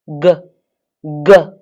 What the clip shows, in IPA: ˈdʒiː